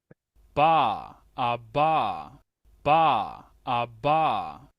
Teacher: para el alfabeto fonético internacional, su nombre es oclusiva bilabial sonora